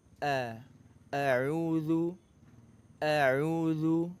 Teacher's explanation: ketika kita mengucapkan auudzubillah bukan a bukan E tapi di antara keduanya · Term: Hamzah